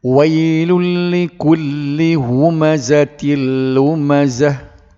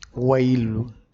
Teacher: Jadi lun tu bila jumpa dengan la, dia jadi masuk dalam la selalu tapi tak ada dengung. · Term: idgham bila gunnah